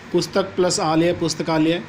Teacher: इस प्रक्रिया में पहले शब्द की अंतिम ध्वनि और दूसरे शब्द की पहली ध्वनि का आपस में मेल होने से एक नई ध्वनि बन रही है। जैसे पुस्तकालय में अ और आ ध्वनि मिलकर आ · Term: संधि